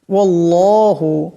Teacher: এখানে আল্লাহ নামের ডানে জবর আসছে, আল্লাহ নামকে মোটা করিয়া পড়তে হবে